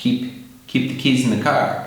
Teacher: When I say keep the keys in the car, keep the keys in the car, you don't really hear the P so much.